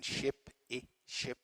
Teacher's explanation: the first vowel which is front and high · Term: short vowel